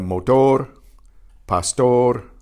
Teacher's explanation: The final R is about halfway between the single R and the double R. It's trilled, but only like 2 or 3 flips of the tongue.